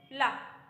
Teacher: किनारे का भाग है जब देखो ल जब बोलते हैं तो ल के जो बगल के भाग है उनसे हमारी जो वायु है दोनों बगल की साइड से निकल जाती है तो उसे हम क्या कहते हैं पार्श्विक व्यंजन कहते हैं सिर्फ